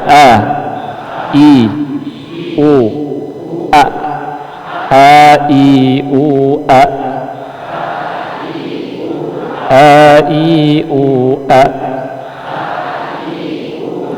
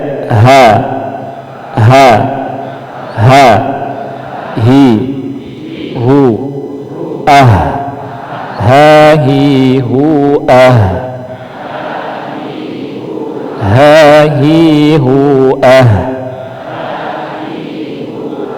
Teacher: Untuk hamzah dan ha ini tenggorokan bagian bawah.